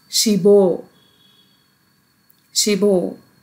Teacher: Ship plus O becomes shibo, because the bachim position, biup in the bachim position mixes with the next block consonant initial, which is iung, which has no sound. So it goes there and it will become shibo.